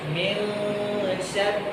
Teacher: اخفا کرتے ہوئے زبان نہ اوپر ٹچ ہوتی ہے نہ نیچے اپنی جگہ پہ بیٹھی رہتی ہے بلکہ بالکل درمیان میں آ کے حائل ہو جائے من شر